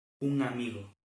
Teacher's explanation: non é ben M nin N, senón que é a nasal velar na maioría dos casos. Entón, se vemos escrito un amigo, leremos un amigo e non un amigo.